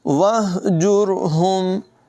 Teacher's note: हा हलक़ के निचले हिस्से से अदा की जाएगी। वहजुरहुम, रा को पुर पढ़ेंगे।